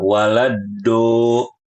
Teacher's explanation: mengubah huruf dot menjadi huruf dal yang ditebalkan